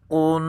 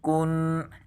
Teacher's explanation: قاف کو ہم پر پڑھیں گے، قن، اس کو باریک پڑھیں گے، کن